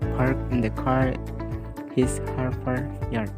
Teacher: Another northern region marker is the variable fronting of a before r.